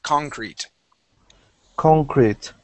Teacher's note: the accent is at the very beginning of the word.